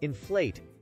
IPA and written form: ɪnˈfleɪt (Inflate)